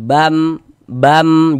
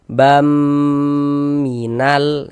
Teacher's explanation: Jangan dibaca ban, tapi dibaca bam. Kemudian di bagian bamnya itu suaranya itu kita tahan, kita panjangkan sejenak ya, sepanjang dua harakat kita ghunahkan. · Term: idgham bi ghunah